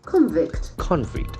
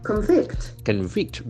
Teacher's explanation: That is a property of a verb and noun in terms of the sounds. In the case of a noun, the accent will be in the first syllable, whereas in the case of a verb, the accent will be in the second syllable.